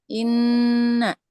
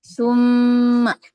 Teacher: Al-Haisum artinya dibaca dari rongga hidung, dengung, gunnah.